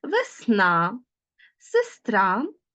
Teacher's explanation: в ненаголошеній позиції е наближається до и